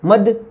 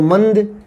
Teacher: जो अनुस्वार है वो नाक से बोला जाता है